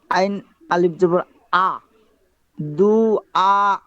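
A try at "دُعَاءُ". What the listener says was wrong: হ্যাঁ, বলেন তো এখানে কি কাহিনীটা হয়েছে আপনার উচ্চারণে? আইন, আইন উচ্চারণ করেন তো। আইন জবর কি হয়? হামজা জবর তা দুইটাই যদি আ হয়ে যায় তাহলে মিলে গেল না? আইন জবর আ,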